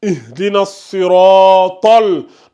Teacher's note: Donc, on a notre lettre emphatique ici. Donc, le ta ici, il est tafkhim. Il est lu de façon emphatique.